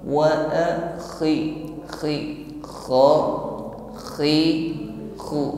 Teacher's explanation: Huruf kha ada suara ngorok tetapi halus, ya, keluar dari adnal halqi, makhrajnya tenggorokan yang paling atas, ya. Ada gesekan antara akar lidah dengan dinding tenggorokan, ya, gesekannya lembut saja. Tidak sampai tenggorokan paling bawah.